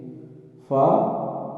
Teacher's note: سامنے والے جو 2 اوپر کے دانت ہیں، 2 دانت جو اوپر کے ہیں سامنے والے، ان کے سرے، ٹھیک ہے، تو ان کے سروں سے جب نچلے ہونٹ کے اندرونی حصہ لگے تو اس سے فا ادا ہوتا ہے، ٹھیک ہے، فا یہاں سے ادا ہوگا۔